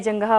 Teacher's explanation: विसर्ग है जंगाह पर, तो हमें यहाँ पर सारी सांस का विसर्जन करना है।